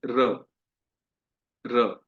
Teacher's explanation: Simple जो र होता है, राम वाला, ये र का उच्चारण होता है, हमारी जीभ का जो आखिरी जो हिस्सा है वो टच होता है ऊपर वाले दांत के जस्ट पीछे, तालू पे। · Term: राम वाला र